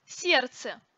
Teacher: сердце произносится без звука д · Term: диереза